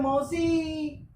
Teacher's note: जैसे आप बोलते हैं, एक शब्द में लिख रहा हूं मौसी, अब इसका सही उच्चारण तो मौसी है, लेकिन हम जब अपना निकटतम व्यक्ति उसको संबोधित करते समय इस तरह बोलते हैं मौसी, तो आपने जो अंतिम स्वर जो ई था उसको 2 सेकंड के बजाय 3 सेकंड लगा करके उच्चारण कर दिया, इसलिए ये जो आपका जो है वो प्लूत स्वर हो गया।